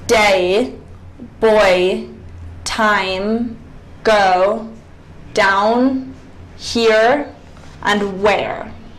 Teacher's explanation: you can hear the transition in one syllable from one vowel to the other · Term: diphthongs